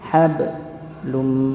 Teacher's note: dipantulkan huruf ba-nya ya, jangan lupa huruf ba yang sukun termasuk pada sifat qalqalah